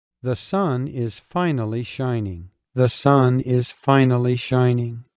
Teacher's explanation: You need to flatten the intonation contour or the pitch.